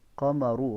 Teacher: را کے اوپر پیش ہے تو را کو موٹا پڑھنا ہے